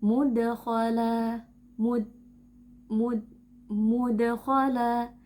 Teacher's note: suara kita terhambat karena huruf Dal memiliki karakteristik Shiddah, yang tidak memungkinkan suara mengalir bersama huruf tersebut.